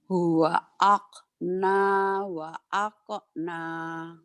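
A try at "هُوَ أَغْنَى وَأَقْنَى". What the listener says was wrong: Bukan akna itu G. Huwa agna. Bukan huwa akna. Orang Jawa itu khonya ke K, khoer. G-nya ke K.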